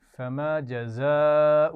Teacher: فَمَا جَزَاءُ مَن يَفْعَلُ ذَلِكَ مِنكُمْ إِلَّا خِزْيٌ فِي الْحَيَاةِ الدُّنْيَا فَمَا جَزَاءُ یہاں آپ دیکھ رہے ہیں بڑی مد ہے تو آپ خوب کھینچ کر پڑھیں گے, اور جزا میں ذال نہیں ہے بلکہ زا ہے, سیٹی کے ساتھ پڑھی جائے گی